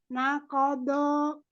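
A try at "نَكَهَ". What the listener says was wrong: Nakobo ya, tidak dimonyongkan bibirnya, tetap dibuka di huruf-huruf yang tebalnya.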